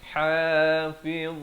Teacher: Ha pedas di pertengahan kerongkong. Jangan baca ha, tetapi yang betulnya hafizin.